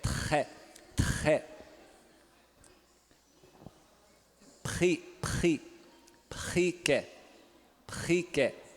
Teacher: ele é surdo, é vibrante múltiplo uvular, surdo